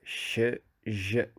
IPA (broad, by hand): ʃ ʒ